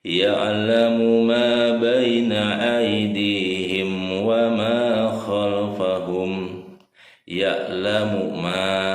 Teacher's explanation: Hukum bacaannya mad tabi'i. Berapa panjangnya? Panjangnya 2 harokat.